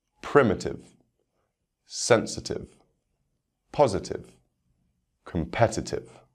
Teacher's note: next words ending in i t i v e for these words the stress will be on the third syllable from the end